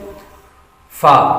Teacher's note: اوپر کے دانتوں کے کنارے اور نچلے ہونٹ کے تر حصے سے ادا ہوتا ہے